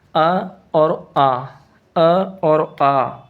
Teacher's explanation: अ और आ जी हमेशा कंठ से बोले जाते हैं, दोनों के दोनों कंठ से बोले जाते हैं, इसलिए सजातीय स्वर कहलाएंगे जी, ठीक है।